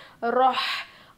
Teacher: हा की आवाज़ हलक के बीच के हिस्से से आती है